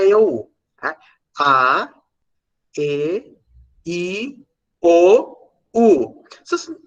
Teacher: podem notar que a boca ela vai fechando ela vai se arredondando no ar ela tá mais aberta é e depois lá no